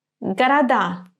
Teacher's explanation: So it's voiceless pair. In the word города, d remains d because it is followed by another sound, and this sound is vowel.